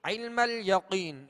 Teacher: یہاں قوف کو پر پڑھیں گے، حروف مستعلیہ میں سے ہیں، اور عین کی ادائیگی وسط حلق سے کریں گے.